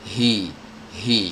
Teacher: tenggorokan paling bawah ya tepatnya itu di pita suara